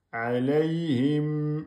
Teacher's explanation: mim soukoun, on peut faire un temps et demi. Alayhim, et ne faites pas de qalqala.